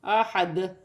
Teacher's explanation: وف کی صورت میں 2 پیش کی تنوین گر جائے گی اور دال ساکن ہو جائے گی، اور احد وف کی صورت میں قلقلہ پیدا ہوگا